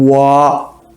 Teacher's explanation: 근데 이중모음 같은 와 입이 모여졌다가 벌려지는 그죠? 두 번 움직이잖아. 그죠?